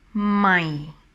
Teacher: this tone is dropping down when you pronounce it, my. So I always say that it sounds like a disappointing tone. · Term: low tone